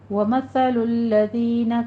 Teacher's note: ثا کو نرمی سے پڑھیں گے، سیٹی کی آواز نہیں آنی چاہیے، اور زینہ میں ذال کو نرمی سے پڑھیں گے، اس میں بھی سیٹی کی آواز نہیں آنی چاہیے۔ · ذال کو نرمی سے پڑھیں گے، اس میں بھی سیٹی کی آواز نہیں آنی چاہیے۔ آگے یا مدہ ہے، 2 کاؤنٹ کرنا ہے۔